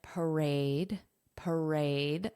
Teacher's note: The syllable stress is on the second syllable aid. Aid. So this is pronounced phonetically.